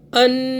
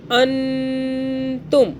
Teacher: नून पे आपने गुन्ना करना है 2 सेकंड का। अन तुम, तामीम पेश, तुम, अन तुम।